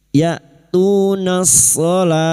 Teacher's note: Nas-shalah masuk ke dalam ta'rif yang bertemu shad idgham syamsiyah.